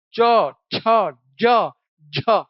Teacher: इनमें जीभ स्पर्श करती है और साथ ही साथ घर्षण होता है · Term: स्पर्श संघर्षी